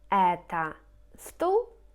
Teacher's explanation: You can hear the intonation это стул. So it goes up on это, and stool is just a straight one.